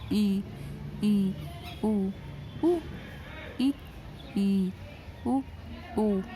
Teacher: मुख का लगभग बंद होना, जैसे मुंह बंद करके ही बोलना अंदर अंदर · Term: संवृत्त